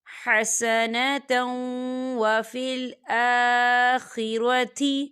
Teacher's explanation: ربنا آتینا فی الدنیا حسنۃ، حسنۃ، یا دیکھیں حسنۃ، تا کے اوپر تنوین ہے اور تنوین کے بعد واو آ رہا ہے، اور واو جو ہے حروف یرملون میں سے ہے، تو یہاں پر ادغام ہوگا تھوڑا سا غنّے کے ساتھ